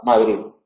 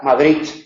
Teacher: hay que pronunciar la D final algo relajada sin llegar a emitir la Z. Sin llegar a hacer Z, una D relajada, Madrid.